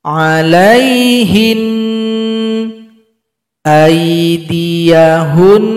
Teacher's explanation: cara berhenti pada nun tasydid, nunnya disukunkan lalu kita dengungkan dua ketukan.